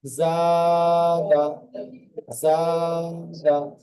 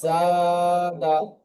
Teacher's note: আলিফ মাদ্দাকে এক আলিফ পরিমাণ টান দিয়ে পড়তে হয়।